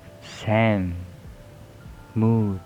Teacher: There is voice bilabial nasal